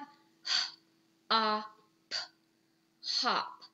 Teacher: The two dots above it represent that it's making that short sound. So O is not saying O, but it's saying ah. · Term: short O sound